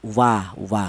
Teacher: huruf wau ini keluarnya huruf berasal dari kedua bibir yang renggang. Wa wa huruf wau ini dihasilkan dari kedua bibir ya baik bibir atas atau bibir bawah.